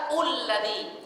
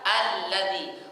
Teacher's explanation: qamariyah berada di awal maka dia dibaca harakat fathah a anya hamzahnya atau alifnya dibaca fathah Bukan dibaca i dan tidak dibaca u Tapi a